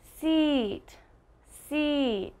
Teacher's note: while my tongue is still on the back of my teeth i have almost a smile a longer sound and i'm smiling